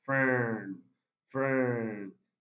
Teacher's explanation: It's a long central vowel sound.